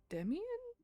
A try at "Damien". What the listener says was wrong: Damien. Two syllables, not three.